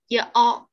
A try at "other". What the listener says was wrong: Không phải âm all, âm a, other. Cái dấu, cái ký hiệu này, cái IPA này, cái máy nhà. Other.